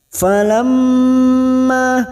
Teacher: ma-nya kita panjangkan 2 harokat, fathah diikuti alif